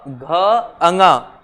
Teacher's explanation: घ अंगा में ज्यादा कंपन होता है